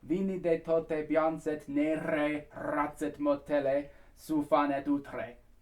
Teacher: the R's are all either sort of Germanic R's or they're rolled R's